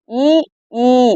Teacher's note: நீங்க அத உச்சரித்து பார்த்தீங்கன்னா உங்களுக்கே புரிஞ்சிரும். வாய் திறந்தாதான்ஃுல்லா திறந்தாதான் ஆ வரும் வாய் திறக்கும் முயற்சியுடன் நாக்கின் அடி ஓரமானது மேல்வாய் பல்லை பொருந்தும் முயற்சியால் பிறப்பது